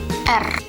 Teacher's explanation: lidah kita berada di posisi kaki gigi bagian atas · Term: getar